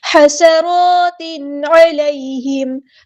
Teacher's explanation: حسرات علیہم، ہاں کو مستحل ہے کہ میڈل تھروٹ سے ادا کرنا ہے، سین کی سیٹی ہم نے واضح کرنی ہے